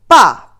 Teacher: this tone is a falling tone which is at the beginning is very high